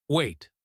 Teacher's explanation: First, she says, "Wait." Used this way with a slightly rising tone and a short pause before the next thought